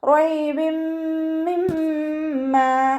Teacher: തെൻവീനിന് ശേഷം ഇദാം ബിഉന്നരക്ഷമായിട്ടുള്ള മീമ് വന്നു. തെൻവീനിനെ മീമിലേക്ക് ലയിപ്പിച്ച് ഉന്നയോടുകൂടി ഓതിക്കൊടുക്കുക